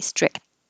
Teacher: But just by itself, if I said my parents were strict, you wouldn't hear the T or the K